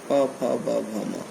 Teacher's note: जब प फ ब भ म कहते हैं तो ओठ एक दूसरे से मिलते हैं और मिलकर अलग होते हैं